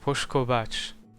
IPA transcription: poʃ.ko'βat͡ʃ